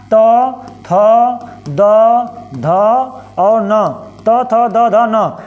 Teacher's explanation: त वर्ग मतलब त थ द ध न, ये बोले जाएंगे दंत से